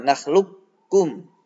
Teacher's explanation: Memasukkan qaf ke kaf ini idgham kamil.